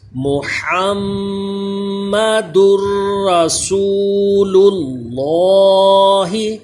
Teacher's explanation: یہ میم پہ دیکھیں تشدید ہے، میم مشدد میں بھی ہمیشہ غنہ ہوتا ہے · یہ لفظ اللہ کا لام پر پڑھا جاتا ہے، موٹا پڑھا جاتا ہے · را حروف یرملون ہے لیکن را میں غنہ نہیں کرتے ، دال را دو پیش در پڑھتے ہیں، در یعنی غنہ